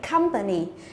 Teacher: cũng là một danh từ có ba âm tiết thì trọng âm rơi vào âm thứ nhất